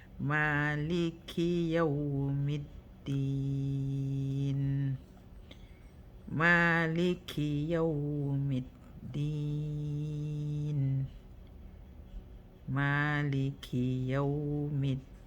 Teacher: So you're holding noon at the end, doing tawassut, because it's Lan Omar, one of the letters that when they have sukun, you hold them for 1 second.